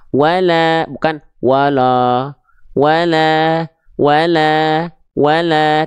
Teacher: Nah, lamnya tipiskan ya, karena vokalnya A ketika fathah. Maka wala, bukan wala, wala, wala, wala, tipiskan pelafalannya.